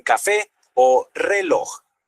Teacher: el golpe de voz, o sea, la sílaba tónica, está en la última sílaba. Piensen, por ejemplo, en café o reloj. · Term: agudas